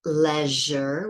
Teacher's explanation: So we have leisure, which is the voiced ZH, leisure, there's no stop